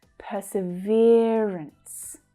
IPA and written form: ˌpɜː.sɪˈvɪə.rəns (Perseverance)